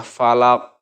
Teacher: cara membacanya adalah dengan cara memantulkan huruf qalqalah dengan benar-benar jelas, besar dan tebal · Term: qalqalah kubro